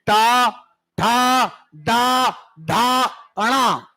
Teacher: टा मूर्धा में, ठा मूर्धा में, डा मूर्धा में